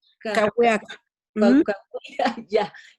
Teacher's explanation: antes de decir ya, en Kawiak, ya, no está pronunciando la última vocal.